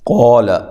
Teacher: قا الف مدہ ہے، قاف کو موٹا کریں، لام کو باریک پڑھیں